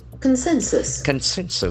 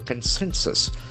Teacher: The accent falls on the second syllable. Consensus. The letter O has got a sound.